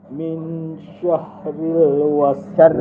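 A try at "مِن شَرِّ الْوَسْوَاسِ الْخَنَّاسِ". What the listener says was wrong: Bukan syah. Bukan syahril. Syarril.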